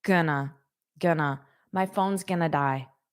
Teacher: you can take going to and pronounce them as gonna